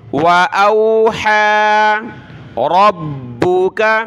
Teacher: با کو سخت کیا تشدید کی وجہ سے